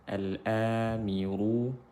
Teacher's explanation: Miru ra tafkhim kerana berharakat dhammah